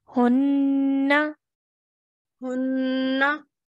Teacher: Hold the noon sound for the noon gunna sound